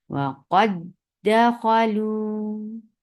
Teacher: وَقَدْ دَخَلُوا، یہ دیکھیے دال متماثلین ہو گئے، اور اس کی صغیر کامبینیشن کیسی کہ دال ساکن، پہلا دال ساکن اور دوسرا متحرکہ، تو اس لیے اس دال میں ادغام ہو گیا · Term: ادغام کامل